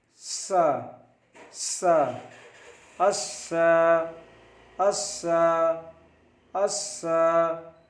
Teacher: जबान की नोक और दोनों दांतों के अंदरूनी किनारे से उच्चारण होता है।